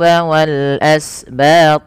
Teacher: Wal asbat alif lam yaitu alif lam qamariyah yang dimana ada alif bertemu dengan hamzah. Ini dibaca dengan jelas lamnya. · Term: izhar qamariyah